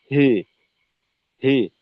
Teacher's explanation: এমালা বলতে আহ, যে জেরের উচ্চারণে একটু একারের মিশ্রণ থাকে